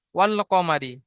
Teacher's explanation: আলিফ পুরা আউট হয়ে যাবে উচ্চারণ হবে না পড়া হবে না শুধু লামকে পড়া হবে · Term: হরুফে কমারি